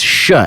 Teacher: Initially to ja, but nowadays, it's sha, at least to porteños.